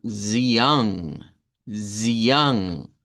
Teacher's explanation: Esta es una A nasalizada